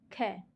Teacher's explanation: ख आराम से निकल गया मुंह से कोई कंपन नहीं हुई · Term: अघोष